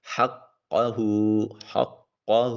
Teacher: ہا کو حلق سے ادا کریں گے۔ قوف زبان کی جڑ اوپر والے جو ہے حلق کے قوے کے ساتھ لگے گی اور ہا کو پھر اقصی حلق سے ادا کریں گے۔